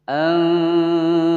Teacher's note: Anza nun sukun bertemu dengan huruf zai, dibaca samar kemudian didengungkan selama 2 ketukan.